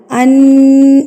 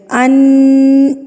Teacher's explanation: آپ نے نون کی آواز کو ناک میں ایک حرکت کے برابر جو ہے وہ ناک میں روک کے رکھنا ہے، اس کو کہتے ہیں غنہ۔